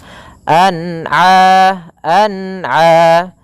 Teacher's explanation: Kemudian di sini a-nya harus dibaca dengan jelas, jangan sampai huruf ain masuk ke pada rongga hidung